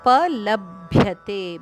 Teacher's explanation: ಭ್ಯ ಮಹಾಪ್ರಾಣಭ ಅದಕ್ಕೆ ಯದ ಒತ್ತು ಹಾಗೂ ತೆ ದೀರ್ಘ